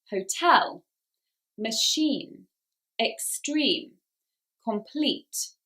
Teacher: they are exceptions to the rule and the stress goes on the second syllable.